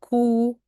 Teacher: And ku, the lips now are like a circle.